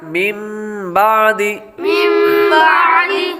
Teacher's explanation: اقلاب میں سے آ رہا ہے اس لیے غنہ کریں گے نون ساکن کو میم سے بدل کر غنہ کر کے پڑھیں گے